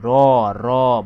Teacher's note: জিহ্বার যে মাথাটা বা জিহ্বার যে একদম সামনের অংশটা একটু কম্পন সৃষ্টি করে একটু কাঁপে এইজন্য এটাকে এই র কে বলা হয় কম্পনজাত বন র কি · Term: কম্পনজাত বর্ণ